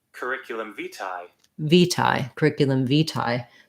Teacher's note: So the overall stress on the phrase, the main stress is on the vitae